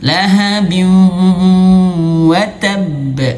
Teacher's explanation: idgham masuk bigunnah, dengan gunnah, dengan sengau